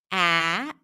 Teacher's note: The back of the tongue is high, ah, and you release air. Ah, this sound tends to get a little nasal sometimes because when you open your mouth in this position, there's usually a small passage that remains open and air comes out through the nose.